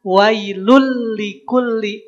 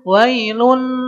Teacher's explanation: Idgham yang tidak boleh pakai ghunah. · Tanwin ketemu lam itu idgham. Maka yang awalnya lun, leburkan ke huruf lam, jadi wailul. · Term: bila ghunah